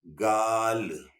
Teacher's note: अब आइए इससे लफ्ज बनता है गाल, गा गा, ला निकालने के लिए ये जबान फिर ऊपर दोनों दांतों के पीछे लग जाएगी, गाल। फिर आइए गला, गा ला लाम के लिए लगा, उसके बाद फिर मुंह खोल दीजिए, गला।